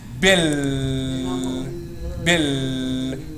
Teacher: You hold this L sound in your mouth at least 2 beats. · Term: Shaddah